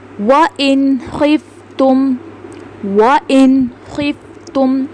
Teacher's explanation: نون ساکن کے بعد خا حروف حلقی میں سے ہے تو یہاں پہ ہم نے نون کی آواز کو ظاہر کر کے پڑھا ہے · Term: اظہار